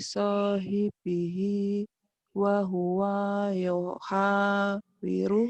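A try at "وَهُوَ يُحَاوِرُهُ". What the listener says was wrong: Pendek. Wahuwa yuha. Wahuwanya pendek. Faqala li sahibihi wa huwa yuhawiruhu.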